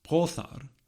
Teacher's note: Brothar has a voiceless fricative.